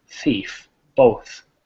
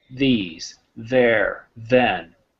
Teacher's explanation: When we say th, there's no vibration. But if we go to function words, these, there, then, we have vibration of the vocal fold